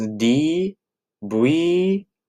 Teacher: The V in Japanese people don't really use the V sound. They use a B sound